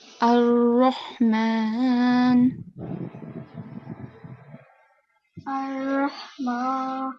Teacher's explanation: So again, the Ra here is going to be thick.